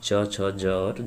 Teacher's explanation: स्पर्श संघर्षी में आपका च, छ, ज और झ होता है